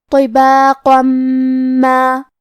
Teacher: پھر حرف المیم ہے. کلمت ما میم حروف الادغام بغنہ میں سے ہے تو ہم یہ حکم کو غنہ اور تشدید کے ساتھ ادا کریں گے